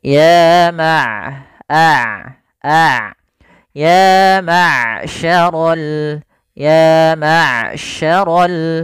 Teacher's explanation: yayarol Ain sifat bainiahnya di antara sifat syiddah dan sifat rakhawah suaranya tidak terlalu ditahan dan tidak pula dialirkan dengan lepas tapi tengah tengah